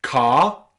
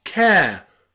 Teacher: we take a short vowel sound and we make it into a diphthong vowel sound.